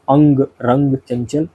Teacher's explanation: अनुस्वार एक नासिक ध्वनि है जिसका उच्चारण करते समय हवा केवल नाक से बाहर निकलती है